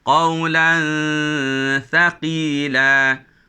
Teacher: Qawlan di tepi huruf ta, maka dengungnya pun menjadi nipis.